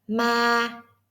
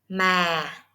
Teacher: Flat like a robot, pitch stay high. Ma and falling like a sigh, pitch goes down.